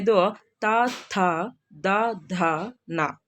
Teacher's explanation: ಇವುಗಳು ಹಲ್ಲುಗಳ ಸಹಾಯದಿಂದ ಹುಟ್ಟೋದ್ರಿಂದ ಇವುಗಳನ್ನ ದಂತ್ಯ ವರ್ಣಗಳು ಅಂತ ಕರೀತೇವೆ